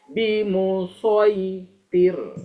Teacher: Sod itu makhrajnya sama dengan sin. Cuma huruf sod ini memiliki sifat isti'alah ya, diucapkan dengan terangkat pangkal lidah